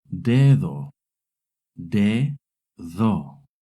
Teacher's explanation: When the D is between two vowels, it makes a soft D sound, similar to the TH in English.